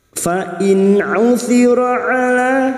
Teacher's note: huruf ain tawassut dan jahar